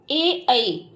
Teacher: ए ऐ, इन दोनों का उच्चारण स्थान कंठ और तालु है। देख लीजिए, कंठ और तालु दोनों को इनका उच्चारण स्थान इसलिए बताया गया कि आ और ई दोनों के संयोग से ए वर्ण बनता है, इसीलिए इन्हें संयुक्त स्वर भी कहते हैं।